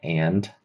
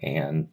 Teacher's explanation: maybe like the stop part sounds like a D, but then the release sounds like a T. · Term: devoicing the D